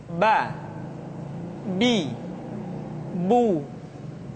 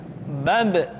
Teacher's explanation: Huruf Ba dikeluarkan dengan cara merapatkan kedua bibir kita.